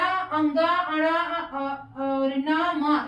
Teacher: जो स्वास है वो मुख से भी निकल रहा है और नाक से भी निकल रहा है। दोनों एक साथ निकल रहा है। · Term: नासिक वर्ण